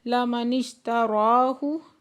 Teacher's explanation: پہ واو مدہ دو حرکت کھینچ کے پڑھیں گے، لَمَنِ اشْتَرَاهُ نون کو شین کے ساتھ ملا کے پڑھیں گے اور را پہ کھڑا زبر ہے دو حرکت کھینچ کے پڑھیں